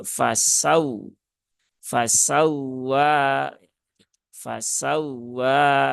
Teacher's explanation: untuk wau yang bertasdid nah dia ada kaidah yang namanya annabr ya annabr jadi ada sedikit penekanan di situ menjadi fasaw fasawa fasawa bukan fasawa fasawa kalau fasawa nanti di